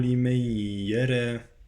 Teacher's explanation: وبرزت الجحيم لمن يرى، الراء مكسورة يعني مرققة، لمن يرى، لا أقول لمن يرى، لإدغام لمن يرى، أدغم النون في الياء